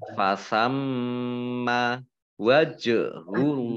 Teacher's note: jim sukun ya, bacaan qalqalah, baca memantul